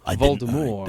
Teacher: and said it's pronounced voldemort there's no t there's no t there's a t at the end but you don't say the t